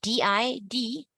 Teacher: Again, take your hands, put it in front of your lips. When you say DI, D, you won't feel too much air.